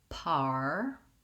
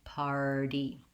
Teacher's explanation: else make sure you can do your american r sound and the r diphthong goes from the vowel ah to the vowel er